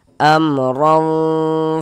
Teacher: maka lidah kita naik terangkat ke atas, tebalkan huruf ro-nya. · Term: tabkhim